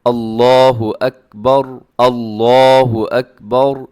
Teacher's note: آخر میں جو را آتی ہے نا اکبر میں، وہ را آپ نے موٹی رکھنی ہے، باقی جو ہیں وہ باریک ہیں۔ لفظ اللہ کو موٹا پڑھنا ہے، اللہ اکبر۔